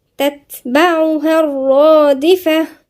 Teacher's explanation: الصفة جريان نفس، لازم نسمع فيه نفس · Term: همس